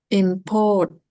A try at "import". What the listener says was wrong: Ah, bukan. Yang ditekan yang di sini. Syllable pertama.